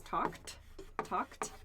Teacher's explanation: so uh talk the past tense of talk is talked talked so the pronunciation there is not talking but talked talked as a t sound